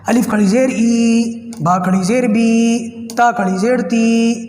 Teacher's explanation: کھڑی زیر کی آواز کھڑے زبر کی طرح لمبی ہوگی، تھوڑا کھینچ کے پڑھیں گے، ہلکا نہیں پڑھیں گے اور بہت لمبا بھی نہیں پڑھیں گے کہ وہ کچھ اور ہی بن جائے۔